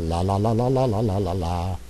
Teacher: it's considered the most open Sound that's the one that singers practice on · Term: ah sound